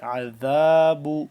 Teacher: ذال کو نرمی سے پڑھیں گے، زبان کو دونوں دانتوں کے درمیان سے ذرا باہر کی جانب نکال کر نرمی سے